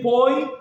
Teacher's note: você percebe que o e tá com som de i, entende? Então ou seja, você tá usando como representação aquele y entre barras.